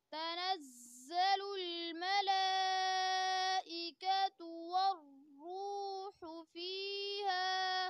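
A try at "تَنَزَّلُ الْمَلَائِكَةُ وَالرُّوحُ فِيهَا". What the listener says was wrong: حقیقتوں میں غور کرنا ہے اور زا کو زیادہ سختی نہیں پڑھنی ہے. تنزل اس طریقے سے نہیں، بلکہ تنزل الملائکہ. حمزہ کو واضح طور پر پڑھیں.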